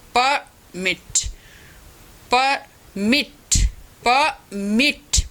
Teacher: मिट पे स्ट्रेस तो एज ए वर्ब